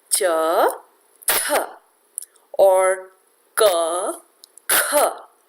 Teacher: the H sound has the effect of making the consonant aspirated.